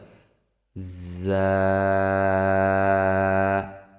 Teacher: যা উচ্চারিত হয় জিহ্বার আগা সামনের নিচের দুই দাতের পেট ও আগার সঙ্গে লাগিয়ে